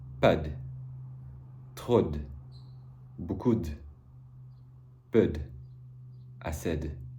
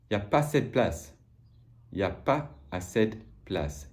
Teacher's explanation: de, which gets reduced to d, almost always in spoken French.